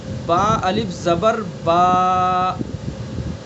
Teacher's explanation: الف کا مخرج ہے جوف دہن یعنی منہ کا خلا۔ جوف دہن منہ کے خالی حصے سے الف ادا ہوتا ہے۔